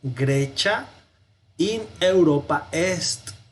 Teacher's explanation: la C antes de la I suena como chi. Entonces vamos a decir Grecia in Europa est.